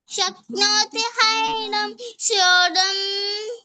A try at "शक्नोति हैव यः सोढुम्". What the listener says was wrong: శక్నోతి శక్నోతి హైవ యః సోఢుం. ఇక్కడ యా ఉందా వైఏహెచ్ ఏం చదవాలంటే యః సోఢుం అని చదవాలి.